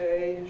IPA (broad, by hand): eɪ